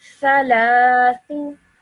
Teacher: 1 second each for the tha and the thu, and this lam would be said for 2 seconds because of the vertical fatha